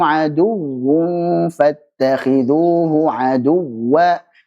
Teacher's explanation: Ditekan wawunya tapi tetap dialirkan suaranya. Jangan sampai jadi mad ya. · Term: waw bertasydid, nabar